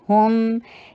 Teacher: करते हैं और शॉर्ट कीजिए, व ला टू हरका लॉन्ग, हुम हा के पर दम्मा, होंठों को गोल और मीम के ऊपर वापस होंठों को अपनी असल नॉर्मल शक्ल में लेकर आइए , दम्मा की शक्ल में नहीं रहेंगे मीम के ऊपर, हुम, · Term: होंठों की गोलाई